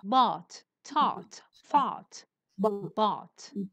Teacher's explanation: But being bought, bought, not bowed. It's not ow, it's ah.